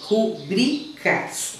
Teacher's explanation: Ela é uma paroxítona. A sílaba tônica dela tá nesse bri aí. Rubricas. Então veja, não tem acento.